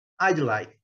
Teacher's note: O D quase não é pronunciado.